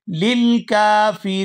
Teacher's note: उइद्दत लिल काफिरीन, यहाँ वक़फ़ की सूरत में आखिर से नून जो है वो साकिन हो जाएगा और नून साकिन होने की वजह से यहाँ पर मद होगी तो हम खींचते हुए यहाँ पर वक़फ़ करेंगे।